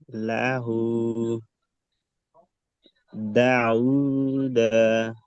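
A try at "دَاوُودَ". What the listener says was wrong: দাও টান হবে আলিফ মাদদা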